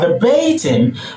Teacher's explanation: So altogether you have verbatim, and the stress falls to the one in the middle, the second syllable from the first, or the penultimate from behind